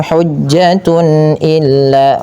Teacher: bacaan izhar yaitu dibaca dengan jelas suara tanwinnya